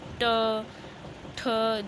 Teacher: जीभ हमारी एक कर्व शेप में चल जाती है। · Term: मूर्धा स्वर